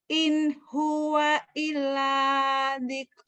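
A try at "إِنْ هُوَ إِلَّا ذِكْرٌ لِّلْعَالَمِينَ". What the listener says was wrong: Illa, nyambernya kurang. In huwa illa. Kurang nyamber.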